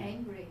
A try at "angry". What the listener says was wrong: Really good, okay?